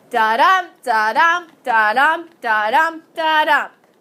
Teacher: Yeah, 5 iambic feet, or 5 units of iambic meter, or 5 sets of an unstressed syllable and a stressed syllable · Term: iambic pentameter